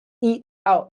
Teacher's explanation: And this is tricky to pronounce actually because this T, we don't go eat out. In American English, this T is a stop.